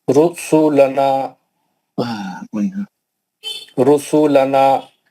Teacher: रसूलना रा मोटा पड़ा जाएगा